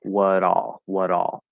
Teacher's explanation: what all because what is wha then we have the t that t would turn into a flap d and move over to ah